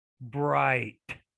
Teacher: notice how the eye is a dipthong it counts as one sound